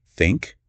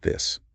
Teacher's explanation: and blowing air Okay. softly for words like think, and with a little vibration for words like this